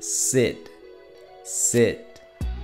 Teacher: la mandíbula desciende más por lo que entonces la lengua no está tan pegada al paladar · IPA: /ɪ/